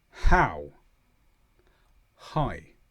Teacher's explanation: there's just a puff of air which accompanies the sound to stop it being completely silent.